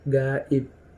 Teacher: Dan untuk huruf P terdapat pada kata tertentu seperti gaib. Itu terdengar seperti huruf P ya, terakhirnya gaib. Padahal itu ada huruf B-nya, gaib.